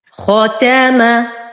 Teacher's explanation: ختم، نفخم الخاء، نرقق التاء والميم